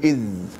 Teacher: هذه الذال رخوة مجهورة